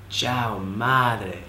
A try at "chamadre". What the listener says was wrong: Not chao. Like chamadre. Chamadre. Like pucha madre. Like, ay ta madre.